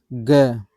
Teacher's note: ग तो गले में आप यहां कंठ पे आप थोड़ा सा हाथ रख के देखेंगे। ग को उच्चारण करने से थोड़ा सा क्या हो रहा है? कंपन फील हो रहा है। वाइब्रेशन फील हो रही है। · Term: सघोष वर्ण